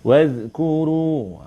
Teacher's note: Wazkuru ni zal bukan zai. Zal. Jadi lidah tu nanti terkeluar sikit